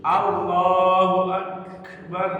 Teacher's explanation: Huruf kaf ini Pak, sampai ketika dia sukun, kafnya berdesis.